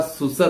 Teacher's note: अब आपको लगेगा इसमें तो स्वर का ही परिवर्तन हुआ है। नहीं भाई, बीच का सु जो वो आगे आ गया और आगे का सा बीच में चला गया